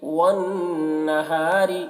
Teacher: نون مشدد ہے، نون میں غنہ کریں گے، اور را کو باریک پڑھیں گے کیونکہ را کے نیچے زیر ہے۔